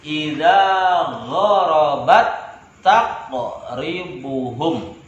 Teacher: Tak bertemu dengan tak, seperti satu tak yang bertasydid. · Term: idgham mutamatsilain